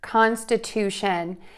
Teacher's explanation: So word stress here is going to really impact this word, and it's a little different than is typical. The word stress is going to be more towards the end of the word because we have that shun ending.